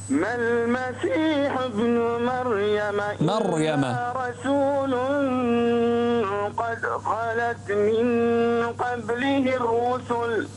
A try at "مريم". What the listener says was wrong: مريم. انتبه إلى مريم الراء، فخم الراء مريم.